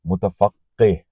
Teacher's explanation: قاف جو آخر میں آ رہا ہے، قاف جس سے قلقند یا قول کہا جاتا ہے، اس پہ تشدید ہے تو وہ دو بار پڑھا جائے گا، متفقہ آپ بولیں گے.